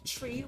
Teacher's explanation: So one of my friends actually make fun of me because when I'm saying the word three, as in the number three, I never say three. I pronounce it as tree, like there's trees outside. · We don't really pronounce the TH sounds.